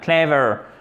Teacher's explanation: on fait bien l'accent tonique. Hop, sur la première syllabe.